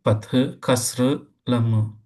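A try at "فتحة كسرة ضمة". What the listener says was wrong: இல்ல, அங்கதான் பிரச்சனையே இருக்குது. ஃபத்ஹத்துன் கஸ்ரத்துன் லம்மத்துன் இறுதியில துன் துன் என்று வாரதான் முக்கியம். ஃபத்ஹா கஸ்ரா லம்மா நாங்க உண்மையில ஃபத்ஹா கஸ்ரா லம்மாங்கிறது இந்த அடையாளத்துக்குரிய பேர் அல்ல.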